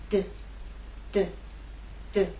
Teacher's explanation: you will feel vibration when you make the D sound